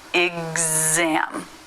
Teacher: G and Z those are the voiced versions of K and S so everything about the position is the same but rather than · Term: voiced pronunciation